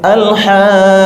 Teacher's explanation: Al-Haqqah 6 harokat, namanya mat lazim, wajib dibaca panjang 6 harokat.